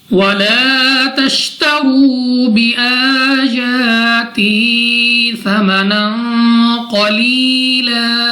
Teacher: یا ساکن سے پہلے زیر، تو یا مدہ کو بھی 2 سیکنڈ تک کھینچ کر پڑھا جائے گا · الف سے پہلے زبر، الف مدہ 2 سیکنڈ تک لمبا کر کے پڑھنا ہے. واو ساکن سے پہلے پیش، واو مدہ، اس کو بھی 2 سیکنڈ تک کھینچ کر لمبا کر کے پڑھنا ہے. الف کے اوپر کھڑی زبر، یا کے اوپر کھڑے زبر، دونوں کو ہم نے کھینچ کر پڑھنا ہے 2 سیکنڈ تک لمبا کر کے.